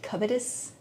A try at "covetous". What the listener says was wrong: You don't have to pronounce the T. It's just it. Covet. You don't have to T. It's just covet.